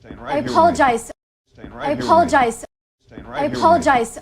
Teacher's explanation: right into the schwa of apologize in a link like this when it's an i diphthong linking into another word that begins with a vowel or diphthong you can think of connecting them with a y sound ye apologize you apologize i apologize it can help smooth out